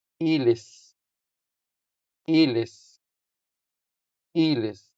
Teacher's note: the stress falls on the first syllable, making the first e longer than the second e.